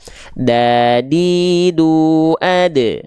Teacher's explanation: dia dilafalkan dari ujung lidah kita sama kayak huruf t nih ujung lidah kita yang ini disentuhkan ke Pangkal gigi Sari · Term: huruf Dal